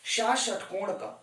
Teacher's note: इसका उच्चारण स्थान है सरकार मूर्धा, इसलिए हम इसे मूर्धन्य कहते हैं